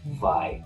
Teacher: W sounds, W, change to V sounds. There's no W in German.